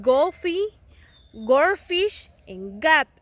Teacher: The other is g. Is velar, stop voiced